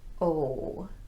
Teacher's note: Notice that my lips are very rounded. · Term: long O sound